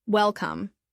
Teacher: Notice that the stress is on the first syllable.